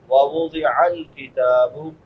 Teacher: عین حلق کے درمیان سے ادا ہوتی ہے، جس کو وسط حلق کہتے ہیں